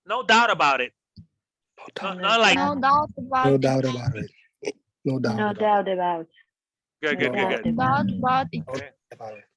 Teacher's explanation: just Americans don't pop their T's so hard